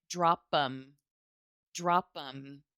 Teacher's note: Drop them off. The TH goes away.